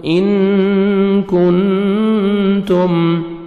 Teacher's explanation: نون ساکن کے بعد 15 لیٹرز میں سے کاف ہے، حروف اخفا میں سے، تو نوز میں ساؤنڈ لے کے جائیں گے، کاف کو باریک پڑھیں گے